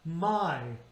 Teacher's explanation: This is a great example of that word I used, which is a diphthong. Remember, two vowels on one syllable. It's ah and it's e